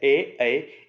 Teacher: ए ऐ, इनके लिए दो दो साथ में होंगे, कंठ और तालु, क्योंकि आवाज कंठ से निकल रही है लेकिन साथ में जीभ तालु को छू रही है। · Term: कंठ तालु